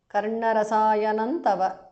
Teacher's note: Anuswara changes to nu there.